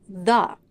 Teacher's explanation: the word the in this phrase It's not the it's the with the schwa at the end because it precedes the consonant sound and it is unstressed